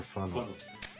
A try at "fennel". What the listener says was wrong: You were saying funnel. You said funnel.